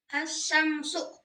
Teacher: huruf lam ini tidak dibaca dan langsung masuk ke huruf shin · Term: alif lam samsiah